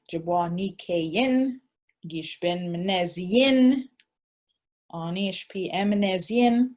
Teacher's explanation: Speakers here tend to drop the short vowel, but it will remain unchanged if it ends in a long vowel.